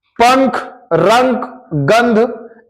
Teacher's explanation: उच्चारण करते समय वायु केवल नाक से बाहर आती है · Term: अनुस्वार